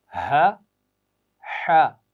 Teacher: ہا کی آواز حلق کے شروع سے اور ہا کی درمیان سے ادا ہوگی